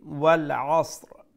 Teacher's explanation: আইন আমরা গলার মধ্য অংশ থেকে উচ্চারণ করব